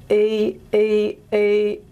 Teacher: the tongue is high but it's somewhere in the middle of the palette in the velar region okay e e e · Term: high central unrounded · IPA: ɨ